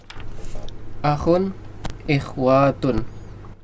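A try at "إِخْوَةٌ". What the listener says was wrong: Ikhwatun, wanya pendek. Pendek, ya, wanya jangan panjang.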